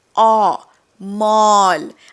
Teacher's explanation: माल म्हणजे गुड्स किंवा स्टफ. पण ते माल नाही आहे, ते मॉल आहे. गोल करायचं तोंड. ऑ. मॉल.